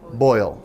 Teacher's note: It sounds like OE, but that's because it's a diphthong. There's 2 vowel sounds connected.